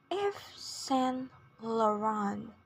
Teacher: it is Yves Saint Laurent in both accents with a stress on the first and third syllables